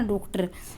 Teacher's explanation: इसका उच्चारण करोगे तो आपके जो होठ है वर्त की तरह गोल हो जाते हैं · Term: आगत स्वर